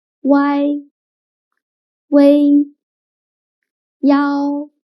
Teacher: when pronouncing these three finals the middle sound should be the longest and loudest one